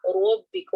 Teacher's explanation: ربکم رو کے اوپر فتحہ ہے اس لیے ہم رو کو موٹا پڑھیں گے. ربکم نہیں پڑھیں گے ربکم پڑھیں گے.